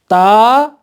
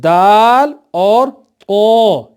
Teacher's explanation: اس کے بعد تا اور اس کے ساتھ شامل حروف دال اور طا، یہ تینوں حروف ہم مخرج ہیں۔ زبان کی نوک جب اوپر کے سامنے کے دانتوں کی پیٹھ پر لگے تو یہ حروف پڑھے جاتے ہیں، اور ان کو تجوید میں حروف نطعیہ کہتے ہیں۔